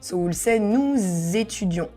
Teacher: And once again we need to connect because ending with s and étudion start with vowel.